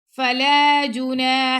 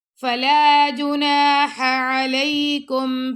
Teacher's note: फला जुना हा गले के दरमियान से अलकुम ये भी गले के दरमियान से ऐन और हा का मखरज एक ही होता है। यानी कि गले के दरमियान से